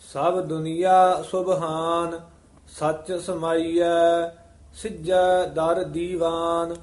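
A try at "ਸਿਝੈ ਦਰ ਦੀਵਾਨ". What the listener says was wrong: ਜ਼ਿਆਦਾ ਨਹੀਂ ਖਿੱਚ ਕੇ ਬੋਲਣਾ। ਸਿੱਧਾ ਐ ਨਹੀਂ ਕਹਿਣਾ। ਆਮ ਜਿਹੜੀ ਚਾਲ ਚੱਲ ਰਹੀ ਹੈ ਉਸ ਦੇ ਵਿੱਚ ਹੀ ਸ਼ਬਦ ਉਚਾਰਨ ਕਰਨਾ ਹੈ। ਸਿੱਜੈ ਦਰ ਦੀਵਾਨ ਆਪ ਗਵਾਈਐ।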